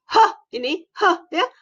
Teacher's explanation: konsonan fricative glottal tak bersuara